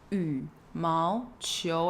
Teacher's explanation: yǔmáoqiú, be third tone, second tone, second tone.